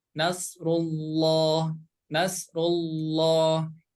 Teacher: bertemu dengan lafaz Allah ya maka cara membacanya harus tebal ya Nasrulloh jadi dibaca loh Nasrullah Nasrullah idza Jaana seperti itu